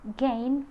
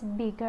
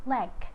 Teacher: G is voiced velar stop